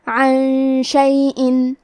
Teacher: پھر حرف الشین ہے. شین حروف الاخفاء میں سے ہے لہذا ہم یہ حکم کو غنہ کے ساتھ ادا کریں گے